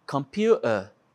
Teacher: Computer no American English, computer no British English. E tem lugares pelo Reino Unido que eles não pronunciam o T. Tem, por exemplo, computer, eles falariam computer, tirando a letra T.